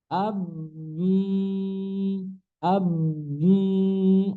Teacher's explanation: Kemudian mim juga sama. Menggunakan kedua bibir, ab, kemudian tidak bisa keluar jadi huruf ba.